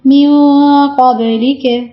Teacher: ٹھیک ہے، میو ایک الف کے مقدار کے برابر میں ناک میں آواز رکھ بھی رہی ہوں. قب، قوف کو موٹا پڑھیں گے، با پہ کلکلا کریں گے